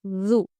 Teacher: دونوں دانتوں کے درمیان میں لال زبان رکھتے ہوئے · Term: زال